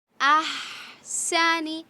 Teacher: ہا جو ہے حلق کے درمیانی حصے سے نکلے اور سین میں سیٹی کی آواز، اور سنی نہیں کریں گے، نون کو نہیں کھینچیں گے، ٹھیک ہے۔